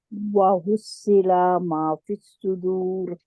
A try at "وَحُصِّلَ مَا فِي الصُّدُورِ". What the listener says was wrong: लाम को खींचना नहीं है।